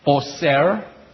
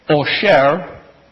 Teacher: Do you hear the same word except one has an S sound, one has an SH sound?